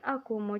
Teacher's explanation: Cara baca vokal A kedua dan ketiga sama dengan tulisan fonetiknya, yaitu dibaca O.